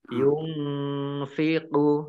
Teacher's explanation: nun sukun bertemu dengan huruf fa, bacaan ikhfa dibaca samar-samar